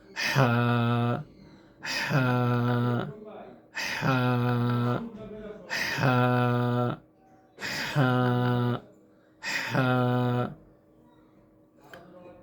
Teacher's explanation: ভিতরে থেকে বাতাস বাহিরে বের করা এবং আওয়াজটা একটু ফেসফেসে আওয়াজ হওয়া।